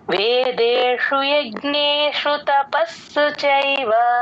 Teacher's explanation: ప కి స ని జాయిన్ చేసి చెప్తే స కింద స వత్తు క్లియర్ గా వినిపిస్తుంది